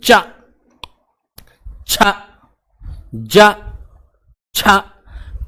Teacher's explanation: पहले स्पर्श होगी जीभ, फिर हवा करेगी संघर्ष। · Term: स्पर्श संघर्षी व्यंजन